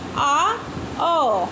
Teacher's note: विवृत स्वर के उच्चारण में मुख्य द्वार पूरा खुला होता है।